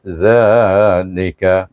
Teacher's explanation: Za itu dibaca panjang dua harakat. Kerana sebelum selepas baris alif terdapat huruf alif mad asli dua harakat.